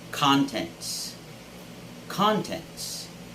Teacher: the stress should be on the first syllable always.